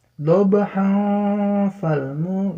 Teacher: Jadi tanwin bertemu dengan fa maka hukumnya ikhfa, dengung dan samar ya.